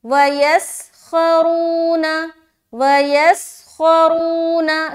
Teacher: رو میں واو مدہ کر رہے ہیں، را کو موٹا رکھیں گے، پیش ہے رون، وَيَسْخَرُونَ وَيَسْخَرُونَ، سین میں سیٹی بھی ظاہر، خوا میں موٹا رکھتے ہوئے کھینچنا بھی ہے۔